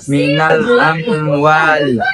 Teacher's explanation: izhar syafawi karena huruf mim sukun bertemu waw. Cara bacanya jelas di bibir.